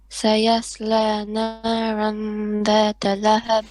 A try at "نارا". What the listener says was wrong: Make your ra more heavy. Naran that lahab.